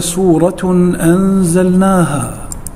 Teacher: حكم الإظهار نجده في قوله تعالى سورة أنزلناها، تنوين وبعده حرف الهمزة، والهمزة من حروف الإظهار